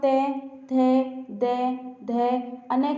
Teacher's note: जब आप त, थ, द, ध, अन का उच्चारण करते हैं कि जीभ दांतों को स्पर्श करती है